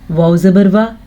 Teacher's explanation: वाव के ऊपर ज़बर है तो वाव को खींचने की यानी लंबा करने की गलती मत कीजिएगा